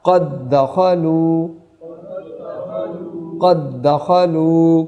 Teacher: اب آگے دیکھیے دال، قد، اور دوسرا دال متحرک ہے، دونوں کو جب مرج کر کے پڑھیں گے مدغم ہوگا تو یہ ہو جائے گا قد دخلوا، قد دخلوا۔